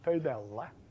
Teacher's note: the first vowel is round and mid and not back, that is front